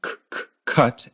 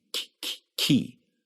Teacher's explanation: And that second k is higher pitched